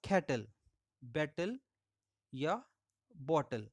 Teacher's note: Second syllable के formation में मदद कर रहा है एल, जो कि सिलेबिक कॉन्सोनेंट है। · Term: syllabic consonants